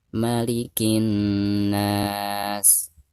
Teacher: ketika kita mentasdidkan dari bacaan ki ke na, itu ada dengung 2 harokat ya. Karena nun yang bertasdid itu adalah merupakan salah satu daripada huruf gunah ya.